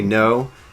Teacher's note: it's got like a little tiny soft r at the end of it